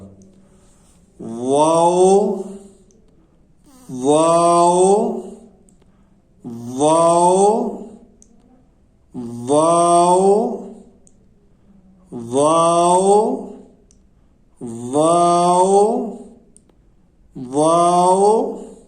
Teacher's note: جب یہ غیر مدہ ہوتا ہے تو دونوں ہونٹ گول کر کے نا تمام بند کریں تو پھر یہ ادا ہوتا ہے۔ دونوں ہونٹوں کو گول کرنا ہے اور نا تمام بند کرنا ہے تو پھر یہ واو ادا ہوگا۔